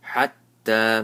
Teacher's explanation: So ta has a tajdeed. Hold on to the ta and stretch it one alif.